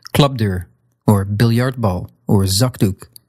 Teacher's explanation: Basically, the P, T, or K take on the voicing from the next consonant.